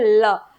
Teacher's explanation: ल के उच्चारण के दौरान आप देखोगे कि वायु दोनों तरफ से निकल रही है, आपकी जीभ मुड़ रही है उसके दोनों साइड से, इसलिए हम इसे पार्श्विक वर्ण के नाम से जानते हैं।